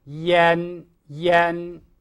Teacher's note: under pressure from the i and the n which surrounded the a changes the quality of its sound to become e yen yen. And you may think of it as ien.